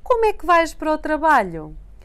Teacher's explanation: See how the three words blend together and sound like one big como é que?